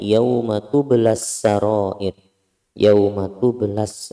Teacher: sebelumnya ada matobi'i bertemu dengan alif lam, maka matobi'inya ini tidak dibaca, meskipun pada dasarnya ada hukumnya, tetapi matobi'inya tidak dibaca. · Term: idgham samsiyah